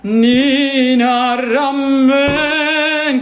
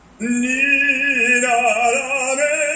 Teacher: It's closed as the vowel Italian E.